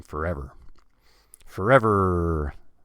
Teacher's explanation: the last sound and that sentence is the r so we you have to hold that nice and long because it's the last sound at the end of the sentence